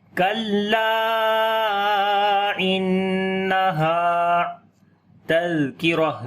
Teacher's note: زال کو نرم پڑھیں گے اور صفت رخاوت بھی ہوگی، یعنی کہ یہاں پر جو ہے آواز کو جاری کریں گے اور نرمی آئے گی · نون کے اوپر شد ہے، غنہ کریں گے، ہا کو لمبا کریں گے، الف مدہ ہے · لام کو لمبا کریں گے، الف مدہ ہے، مد منفصل بھی ہے یہاں پر، کیونکہ الف مدہ کے بعد حمزہ اگلے لفظ کے شروع میں ہے، اس وجہ سے 2 سے 3 الف کے برابر لمبا کرتے ہیں.